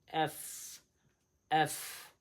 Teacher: এফের উচ্চারণ হবে এই উপরের দাঁত নিচের ঠোঁটের সঙ্গে লাগতে হবে